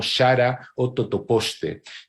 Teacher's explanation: la pronunciación prepalatal fricativa en indigenismos, es decir, la pronunciación de esos vocablos que tienen ahí como shara o totoposte.